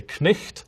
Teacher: Once upon a time, people genuinely did pronounce the K at the start of night.